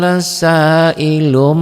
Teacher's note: bunyi n-nya berubah menjadi m saalilum tuh lung tapi ada bindengnya Mirip Ik sapawi mirip nun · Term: iqlab